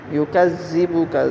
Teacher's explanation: فَمَا يُكَذِّبُكَ، اب ذال کو نرمی کے ساتھ پڑھیں گے، يُكَذِّبُكَ، ذال زا کی طرح نہیں پڑھیں گے، نرمی کے ساتھ پڑھیں گے